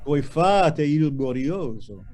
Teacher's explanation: Oh. Voi fate, lean on and elongate the stressed syllable. The stressed syllable is fa.